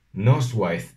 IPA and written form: nɔs.ʊaiθ ða (noswaith dda)